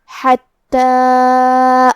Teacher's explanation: کلمت حتیٰ میں ہا کو ہم حلق کے درمیان والے حصے سے پڑھیں گے